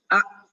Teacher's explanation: Tidak ada suara yang keluar. Kalau hamzah ini suara tidak keluar, nafas pun tidak keluar. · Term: syiddah